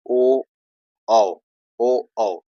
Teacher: ओ, ओठ से हो रहा है, ओठ गोल हो जा रहा है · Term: कंठ ओष्ठ